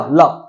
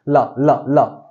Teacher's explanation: जब ला बोलो तो आपकी जीभ किस पे टच हो रही है बेटा दांत पे टच हो रही है